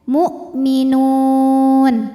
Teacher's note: Hamzah tertahan suaranya karena punya sifat namanya syiddah